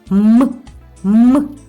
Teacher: приголосний звук ми його не можемо проспівати так як голосні і при вимові звука м нам заважають губи і вимовляємо ми його коротко